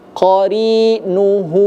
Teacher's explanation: ada huruf ha tapi dia dibaca dua harakat ya. dibaca dua harakat dan hukum bacaannya disebut dengan mad silah qasirah.